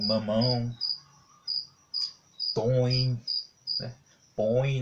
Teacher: ele é um som de nasalidade, né, que é um som que demonstra que saiu bem, saiu assim mais pelo nariz, né, e ele é colocado em cima das vogais O e A.